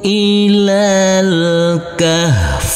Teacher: Huruf lam di sini langsung masuk ke huruf lam dan huruf alifnya kita anggap tidak ada dan dibaca pendek. Ilal kahf. Huruf fa harus tetap terbaca.